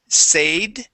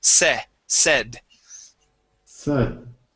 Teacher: Here you had said said. Okay, instead of a long A saying say, the word has a short E sound